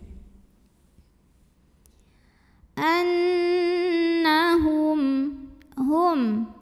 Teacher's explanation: karena Nun bertasydid cara bacanya dengung bunyi n-nya tahan sampai ada getaran halus ke hidung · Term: ghunnah